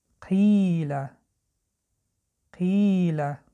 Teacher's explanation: ببینید حرف ای را ما دراز کشیدیم به دو حرکت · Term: مد